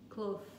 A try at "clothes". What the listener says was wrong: So instead of blowing air, you're making the humming sound, so the voiced dental fricative. So you go v. So clo, so there's a long O, of course, detailing the difference in English word.